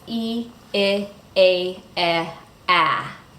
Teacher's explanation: So the first one, E, is in the word beat, I is in the word bit, A is in the word ate, E is in the word bed, and A is in the word bad. So you can see how the jaw drops to make the A vowel low. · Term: front vowel